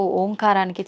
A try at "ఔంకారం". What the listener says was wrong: అది ఓంకారం కాదు, ఔంకారం. ఔం అని ఉచ్చరించినప్పుడు అకారము ఉకారము రెండూ పలకబడి ఓంకారం దీర్ఘమవుతుంది.